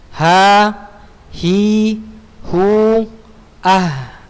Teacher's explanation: Ya, ingat huruf ha ini tenggorokan bawah ya, bukan dada. Bukan suara yang keluar dari dada, tapi suara yang keluar dari tenggorokan bawah.